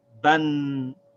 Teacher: It has the same vowel sound, but we add a noon sound at the end of it. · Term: tanween